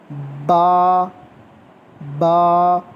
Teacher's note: बा यानी कि दोनों होंठों को मिला के पहले आवाज़ बनानी है, उसके बाद फिर मुंह खोलना है।